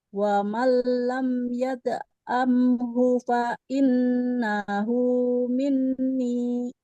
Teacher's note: Ho-nya innahu nggak boleh panjang.